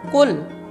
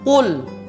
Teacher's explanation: Qul dengan huruf qaf dan dia tebal